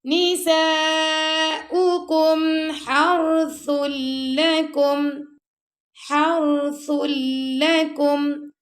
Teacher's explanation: ہا کے بعد جو را ہے نا اس کو ہم نرمی سے پڑھ رہے ہیں